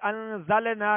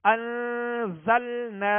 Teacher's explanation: نون ساکن کے بعد زا حروف اخفا میں سے ہے، انزلنا لام کے اوپر جو سکون ہے اس کو کامل ادا کرنا ہے، آواز ہلے گی نہیں، جنبش پیدا نہیں ہوگی